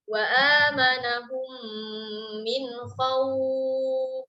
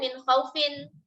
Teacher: karena lin ini berjumpa dengan sukun arid, maka di sini terjadilah mad lin. Boleh kita baca 2 harokat, boleh kita baca 4 harokat, boleh kita baca 6 harokat.